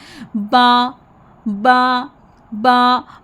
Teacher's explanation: बा के मखरज में क्या करेंगे डियर किड्स कि आपने होठों को बंद करें। जब अचानक से होंठ खुलते हैं तो फिर जैसे हल्की सी फटने की आवाज़ आती है